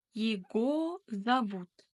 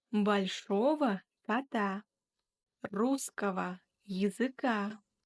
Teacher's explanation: Его, ого деген сөздерде осы г әрпін в деп оқимыз. В деп айтамыз.